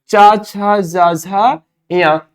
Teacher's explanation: ये सभी तालव्य ध्वनियां हैं